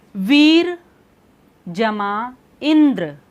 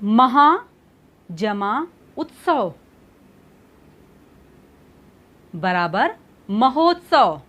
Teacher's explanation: जब हम कहते हैं महा जमा उत्सव बराबर महोत्सव, आपने देखा आ और ऊ दोनों मिले तो क्या हो गया? ओ बन गया। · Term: गुण संधि